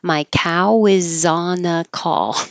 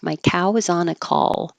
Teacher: with call at the end you need to hold the L position a little longer than you might think so it can be heard